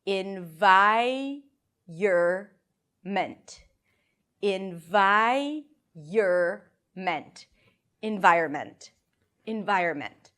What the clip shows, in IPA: ɪn-ˈvaɪ-(y)ər-mənt